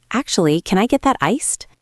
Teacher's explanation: Listen to the tone there. It goes up at the end. It is friendly.